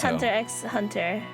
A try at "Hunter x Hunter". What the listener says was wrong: We don't pronounce X. The X is silent.